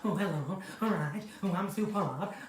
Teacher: Oh, Sue Pollard, you've got to be quite breathy